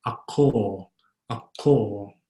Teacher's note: An O is like an English O, but always consistently O, very rounded.